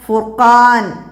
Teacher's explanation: ഫുർഖാൻ എന്നതിലെ റായിനെ തഫീം ചെയ്യണം. കാരണം റായിന് മുമ്പ് ലൊമ്മ വന്നു.